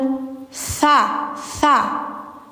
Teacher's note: tsa tsa lidah ujung di gigi atas